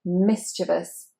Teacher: And the stress is, of course, on the mi